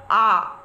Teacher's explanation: বাংলা ভাষায় একমাত্র কেন্দ্রীয় স্বরধ্বনি হলো আ এই আ উচ্চারণের সময় দেখা যায় জিউহা সম্মুখ এবং পশ্চাতের মধ্যবর্তী